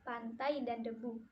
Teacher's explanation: Konsonan hambat alveolar tak bersuara dan bersuara, yaitu T dan D. Dilafalkan dengan ujung lidah ditempelkan pada gusi